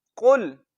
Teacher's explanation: काफ को मोटा पढ़ना है, लाम के साथ मिलाना है, काफ को लंबा नहीं करना